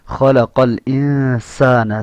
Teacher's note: سین کے اندر سیٹی کی آواز ہے